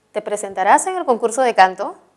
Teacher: este enunciado corresponde a una pregunta directa total por lo tanto su tono es ascendente